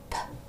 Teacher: The teeth start in a slightly open position, and the lips are closed and then open as the jaw drops, making a puff of air come out.